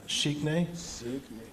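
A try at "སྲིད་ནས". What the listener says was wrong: Low tone S. No, low tone S.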